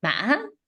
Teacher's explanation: The high broken tone, that kind of sounds like a bleeding sheep